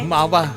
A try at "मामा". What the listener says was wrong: अरे मावा नहीं, मामा बोलिए।